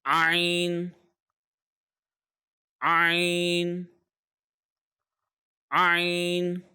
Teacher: The letter Ayn comes from the middle throat, from the center of the throat.